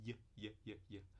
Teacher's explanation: E tem o palatal, aproximante palatal, que o símbolo parece esse J, e é ia, tá?